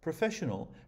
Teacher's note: professional has four syllables and is stressed on the second so write it in 4.2 here are some of the words